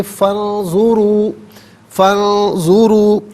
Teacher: ساکن کو پر کر کے پڑھیں گے۔ فی الارض، فا انظروا، فا پر زبر ہے، اسے انظروا کے نون ساکن کے ساتھ ملائیں گے، درمیان میں سے الف یعنی حمزہ کو حذف کیا جائے گا